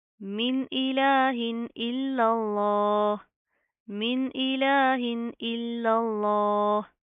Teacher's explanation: पहला लाम बारीक और लफ्ज़ अल्लाह का लाम मोटा